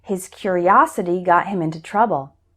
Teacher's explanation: the strong syllable is us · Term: word stress